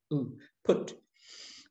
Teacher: You know, when we say it in English, we say it with a Y almost, Y-O-O or Y-U. It's not you, it's u, without the Y in the front of it, u, put. When it's got a macron, the little stroke above it, it's elongated.